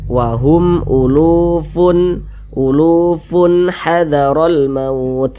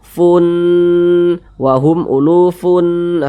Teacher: maka funnya ini dibaca jelas kemudian tak berdengung jadi dibaca pendek saja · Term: izhar halq